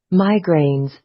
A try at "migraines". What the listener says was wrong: So the stress is in the first syllable. So এই জায়গাটা আপনাকে একটু লম্বা করে বলতে হবে, not migraines.